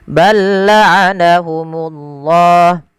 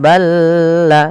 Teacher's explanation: huruf lam yang pertama dimasukkan ke huruf yang kedua tapi tidak ditahan, tidak balla, tapi langsung saja. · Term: idgham mutamasilain